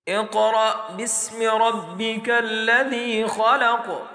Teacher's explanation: قاف موٹا پڑھا جائے گا، ساتھ میں جھٹکا بھی ہوگا کیونکہ یہ حروف قلقلہ میں سے ہیں۔ حروف قلقلہ جب ساکن حالت میں ہو تو اس کو جھٹکے سے پڑھتے ہیں، اس لیے قاف جب ہم ملائیں گے حمزہ کے ساتھ تو اس کو جھٹکے سے پڑھیں گے۔